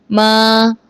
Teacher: ما بند ہونٹوں کے خشک حصے سے ادا ہوتا ہے